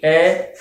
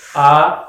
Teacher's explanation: ए को बोल रहे हैं और आ को बोल रहे हैं, तो आ में लगभग दुगना समय लग रहा है उसको उच्चारण करने में, इसलिए हम इसको द्विमात्रिक कहेंगे, इसको एक मात्रिक कहेंगे।